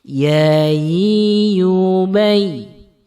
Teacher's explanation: Huruf ini keluar dari tengah lidah yang bertemu dengan langit-langit mulut kita. Jadi saat membaca, lidah kita naik menyentuh langit-langit mulut kita.